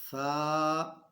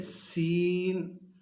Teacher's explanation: سا کو نرمی کے ساتھ پڑھنا ہے اور سین کو سختی کے ساتھ پڑھنا ہے، سیٹی کی آواز آنی چاہیے